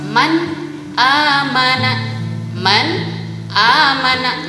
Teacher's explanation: nun sukun dibaca jelas izhar setelahnya ada huruf hamzah